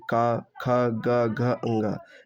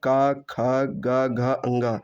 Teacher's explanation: जिन वर्णों का उच्चारण करते समय जीभ का पिछला भाग हिस्सा हमारे कंठ को छूता है। उन्हें हम कंठ व्यंजन कहते हैं।